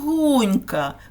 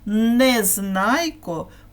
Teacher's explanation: в імені Гунько є звук нь і він на відміну від н вимовляється м'яко ніжно лагідно тому його називають приголосним м'яким і позначають двом рисочками А тепер